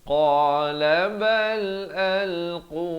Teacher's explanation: Huruf qaf makhrajnya di pangkal lidah.